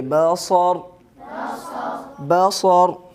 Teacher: وقف کی حالت میں زبر کو ساکن کریں گے